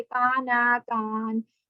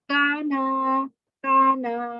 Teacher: مدہ والا حرف ہے. الف مدہ، خالی الف سے پہلے زبر ہے تو کانا کانا ایسے پڑھیں گے، لمبا تھوڑا سا کر دیں گے